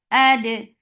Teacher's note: Dal will get sifa of qalqala. And dal is light.